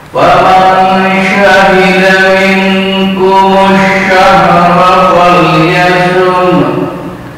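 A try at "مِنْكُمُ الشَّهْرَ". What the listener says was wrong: Minkumush, bukan minkumul syahra. Kumush syahra.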